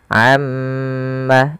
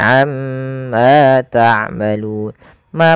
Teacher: bunyi Ma Amma karena pada lafal tersebut ada yang dinamakan dengan bacaan ghunah itu cara membacanya mnya ditahan Amma jangan langsung Amma tapi am Ma panjangkan dua harakat karena